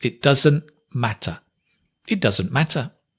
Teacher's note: Notice again, it doesn't, the t drops.